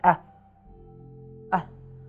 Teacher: this called Hamza and it makes the glottal stop like ah like you say when you are talking to say